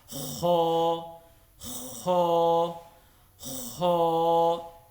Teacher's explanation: اور تیسری بات یہ ہے کہ اس کی تجوید یہ ہے کہ اس کو ہا جہاں سے ہم پڑھتے ہیں حلق کے مڈ سے، اس سے تھوڑا سا اوپر کر کے اس کو پڑھنا ہے